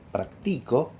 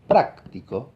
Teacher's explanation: Si yo digo practico, que en castellano es una voz de 3 sílabas, ¿no? La segunda sílaba es la que carga con el tono alto